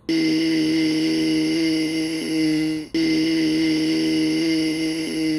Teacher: Overall, I'm hearing roughness. I also hear some air leak. So I think we have a mixture of more than one sound source and leaking air.